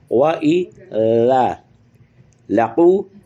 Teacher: क़ौफ़ को थोड़ा सा पुर करना है और फिर अल्लज़ीना की लाम के साथ मिलाना है।